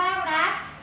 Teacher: รักนี้ก็เป็นสระอะสระเสียงสั้นนะคะสะกดด้วยแม่กก